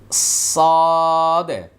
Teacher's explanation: সদ বলার সময় আওয়াজটা মোটা হবে এবং ভিতরে বাতাসটা কন্ট্রোল করতে হবে